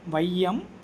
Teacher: சரிங்க சார் அது முழுமையா தனிச்சு நிண்டா இரண்டு மாத்திரைன்னு சொல்றீங்கள அப்ப முதல்ல வந்தா எத்தனை மாத்திரை சார் இது கேள்விங்க சரிங்களா ஐகார சொல்லோட முதல்ல வரும்போது சரிங்களா அப்ப ஐகாரம் அப்படின்றது சொல்லோட முதலில் வரும்போது அதனுடைய மாத்திரை அளவு ஒன்றரை மாத்திரை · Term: ஐகார குறுக்கம்